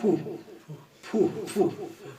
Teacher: دو ہونٹ مل کے پھو نکلتا ہے